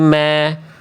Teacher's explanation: tinggal tipiskan mim, jangan mo. Tapi ma jangan mo.